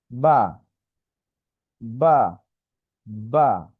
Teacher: বাটা হচ্ছে দুই ঠোঁটের ভিজা জায়গা হতে উচ্চারণ হয়। স্বাভাবিকভাবে আমরা যেভাবে থাকি সেভাবে থেকে আমরা এটাকে উচ্চারণ করব, যেমন বা, বা, বা।